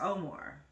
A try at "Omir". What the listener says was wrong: Omir. It's the E, not an A. Omar, Omir.